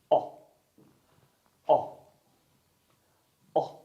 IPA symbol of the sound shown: ɒ